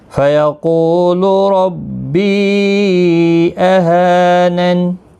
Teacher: را زبر کی وجہ سے پر پڑھا جائے گا